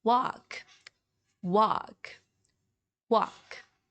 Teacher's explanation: So instead of saying walk, walk, you would say more of walk, walk, walk. Okay, you just ignore the letter L in the middle.